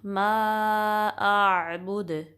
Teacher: मीम को फिर हम 3 से 4 काउंट स्ट्रेच करेंगे। मा आबुद, दाल पे कलकला करेंगे क्योंकि दाल साकिन हुआ है तो इस पे आवाज़ क्या है कि आपकी पलट के वापस आएगी